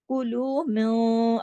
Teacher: इख्फा भी हो रहा है, लेकिन मोटा भी इख्फा हो रहा है, आवाज थोड़ी मोटी भी हो रही है।